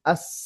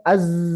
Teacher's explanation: itu namanya hames. Mengalir udara suaranya samar. Sementara jahar tidak ada udara suaranya jelas.